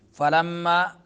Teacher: फलम्मा मीम मुशद्दद है तो गुन्ना होगा